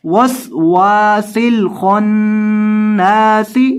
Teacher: سین کے اندر سیٹی کی آواز پیدا کرنی ہے یہاں بھی اور یہاں آخر پر بھی آپ نے سین کے اندر سیٹی کی آواز پیدا کر کے پڑھنا ہے.